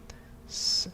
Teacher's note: reduced it is a voiceless letter it's an interesting expression because it literally is a voiceless letter because it really doesn't involve the vocal cords